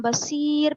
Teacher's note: رائے ساکنہ سے پہلے یائے ساکنہ ہے تو رائے ساکنہ ہر حال میں باریک ہوگی